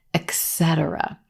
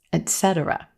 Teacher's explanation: But there's no x sound in this word.